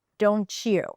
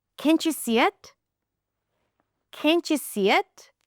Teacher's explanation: when there is a t sound at the end of one word and a y sound at the beginning of the next word and that becomes ch